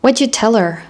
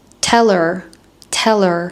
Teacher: I dropped the h in her and I linked the words together.